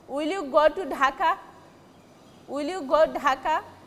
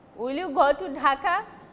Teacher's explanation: your question will be with a rising voice or upward intonation